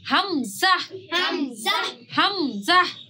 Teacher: জাহ, Zah. মানে শেষে একটা হায়ের মতন আসবে এবং একটা ধাক্কা দেওয়ার মতন হবে